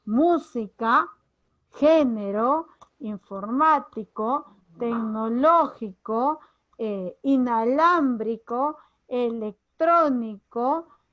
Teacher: esdrújula, sílaba tónica, es decir, mayor fuerza de voz en la antepenúltima. Todas se tildan sin excepción. · que te estoy dando algunos ejemplos dice esdrújula si nava atómica debe ser mayor fuerza de voz en la antepenúltima